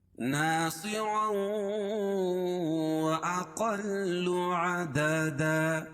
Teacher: اور 2 زبر کی تنوین کے بعد ادغام مع الغنہ کے 4 حرفوں میں سے واو آ جائے گی۔ تنوین کے بعد یہاں واو ہے، اس لیے یہاں ادغام ہوگا غنہ کے ساتھ۔ ناصرا، یہی غنہ ہے، ناصرا وأقل عددا.